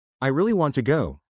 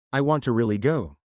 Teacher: the stress on, really, emphasizes my desire more than if I say, I want to really go